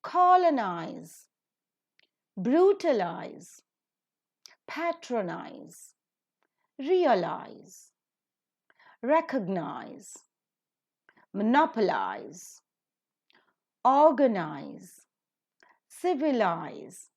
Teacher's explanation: one syllable anti-pen ultimate syllable is third from the last so the third from the last syllable is to be accented